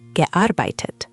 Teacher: Just put a touch more weight on the arbeitet in the middle.